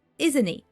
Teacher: we drop T in isn't and we link the n Sound to the word it and it in its turn drops the T at the end